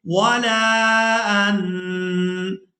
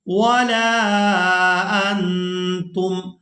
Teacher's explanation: نون ساکن پر اخفا کریں گے، آواز کو ناک میں چھپائیں گے، نون کی آواز کو ناک میں چھپائیں گے